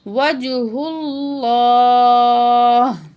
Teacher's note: تو ہا کی زیر ڈراپ ہو جائے گی، ہا کو ساکن پڑا جائے گا